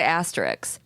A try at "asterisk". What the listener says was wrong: I put the S at the end.